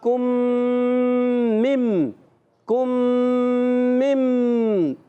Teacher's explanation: اچھا دیکھیں، نخلقکم، کم میں غنہ اور پھر مم کا غنہ، یعنی کم اور پھر مم، 2 غنّے ہو گئے